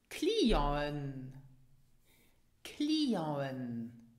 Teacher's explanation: the C is pronounced K and the final T is silent